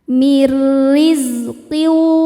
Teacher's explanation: Riz zainya berdesis ya. Salah satu sifat huruf zai adalah shofir. Ada desisan seperti suara lebah.